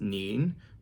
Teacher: second tone Rising tone